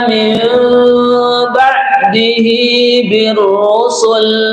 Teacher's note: kalimat mil nun mati berjumpa dengan ba namanya adalah iqlab dibaca mendengung juga